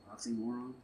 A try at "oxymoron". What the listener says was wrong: Stress there is on moron, on more. So it's like oxy-more.